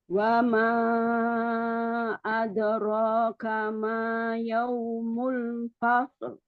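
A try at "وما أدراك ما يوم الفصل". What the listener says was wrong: Oke bagus.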